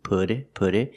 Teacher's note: The T in put changes to a fast D